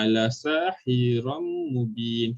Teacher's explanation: Okey, seterusnya bi gunnah iaitu menggabungkan suara huruf yang berbaris sukun ke dalam huruf yang berbaris lah beserta dengung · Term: idgham bi gunnah